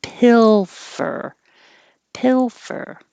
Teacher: If you don't hold your tongue in the L position the whole time you're ready to make the F, it won't sound like you are making an L. Pilfer. It doesn't sound the same.